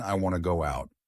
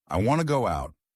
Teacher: Connected speech, did you hear the difference? Instead of want to, I said wanna.